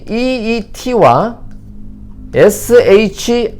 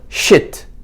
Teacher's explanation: 한글의 이 사운드는 영어로 가면 장모음 E와 단모음 이 두 가지로 나눠집니다. 예를 들어 SHEET와 SHIT 위의 발음은 sheet, 밑에 발음은 shit.